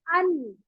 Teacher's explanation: जबान की नोक तसादुम करती है तालू के ऊपर वाले हिस्से से जो कि दांत के पीछे है, तो बन गया आपका तसादुम, तसादुम से अदा हो गया।